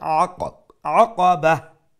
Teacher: Aqaba ayn, middle of the throat, and at the end if we stop then the round ta will become a ha